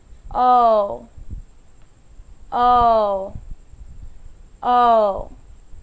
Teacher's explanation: poke now that o sound your mouth you can see that my mouth starts big and gets smaller